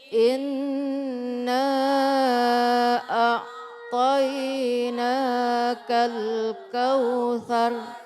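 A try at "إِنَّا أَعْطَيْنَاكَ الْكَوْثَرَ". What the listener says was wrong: Masih belum kompak 4 harokatnya.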